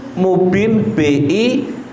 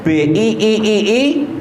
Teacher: Jadi ketika membaca mubin ini tidak dengung. Hati-hati. Rata-rata masyarakat umum ini bacanya dengan dengung. Misal mubin, dia pakainya mubin BINNNNN gitu.